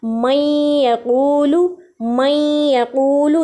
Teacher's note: आप देखिए मई में हमारी आवाज़ नाक में जा रही है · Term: इदगाम गुन्ना के साथ